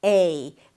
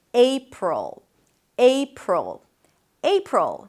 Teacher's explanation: It's a diphthong, a changing vowel. So you wanna hear it shifting from 'e' to 'i'.